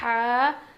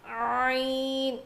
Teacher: جب ہم یہ ہا پڑھیں گے تو ہوا باہر نکلے گی سانس، اور عین پڑھیں گے تو نہیں نکلے گی. ہا، عین، دونوں کا مخرج سیم ہے.